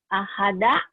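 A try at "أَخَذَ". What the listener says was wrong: Ahada. Salah. Akhoda ada titiknya ya. Kalau ahada nggak ada titiknya. Akhoda ada titiknya.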